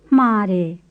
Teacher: It's a breathed M, and it works the same way as the breathed L in flare, to be pretty, and the breathed N in ne, meaning to. You start with a whispered M, and you finish with a normal M, and when you put the two together, you get the breathed M.